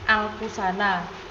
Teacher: muncul pada kata-kata serapan seperti anfusana anfusana mengalami asimilasi di mana bunyi n berubah menjadi ng karena pengaruh bunyi konsonan di sekitarnya